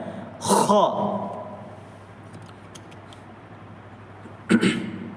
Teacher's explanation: یہ شروع والے حلق سے نکلتا ہے